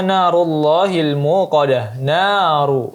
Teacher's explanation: Ya, na dibaca 2 harakat mad tabi'i. Kemudian ru-nya ditebalkan karena dia berbaris dhammah.